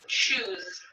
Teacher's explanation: Shoe ends with a vowel, and all vowels are voiced.